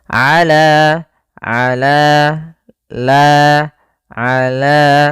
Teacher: yaitu fathah bertemu Alif panjangnya dua harakat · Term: Mad thabii'i